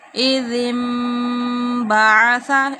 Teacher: نون ساکن کے بعد بار ہے یہاں پہ انقلاب ہو رہا ہے